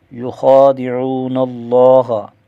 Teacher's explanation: یخادعون اللہ، خا کا کھڑا زبر ایک الف کھینچ کر پڑھا جائے گا، اور خا کو موٹا بھی کریں گے، واو ساکن کا واو مدہ ہے، اور لفظ اللہ کلام موٹا پڑھا جائے گا، اور ایک الف کھینچ کر بھی پڑھیں گے۔